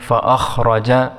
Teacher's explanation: اس کی مد کو بھی 5 سیکنڈ تک کھینچیں گے، فاخرج، خا کو موٹا پڑھیں گے اور را کو موٹا پڑھیں گے